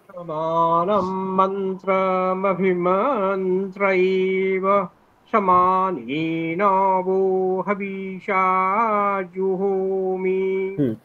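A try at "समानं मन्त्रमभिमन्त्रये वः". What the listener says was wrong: আপনি প্রত্যেকবার একটু স্পিড করছেন, হ্যাঁ, স্পিডটা একটু কমাবেন। মন্ত্রয়ে মকারে এক্সট্রা স্বর বলতে হবে যে মন্ত্রমভিমান্ত্রয়ে, মন্ত্রয়ে এটা বলতে হবে আবার। হ্যাঁ, আরেকটু কম করলে ভালো। স্পিড যত কম করবেন তত ওটা শ্রুতি মধুর হবে।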